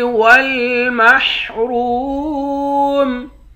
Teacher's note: را کو واو کے ساتھ ملا کر واو کو ایک الف کے مقدار کھینچ کر پڑھیں گے، را کو موٹا بھی پڑھیں گے، آخر میں میم ساکن ہے۔